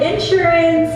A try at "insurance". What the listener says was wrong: You put the emphasis on the wrong syllable. It's insurance. Not in... Insurance. They say insurance. It's insurance.